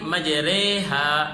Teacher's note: امالہ والی را اس کو بھی باریک کر کے پڑھتے ہیں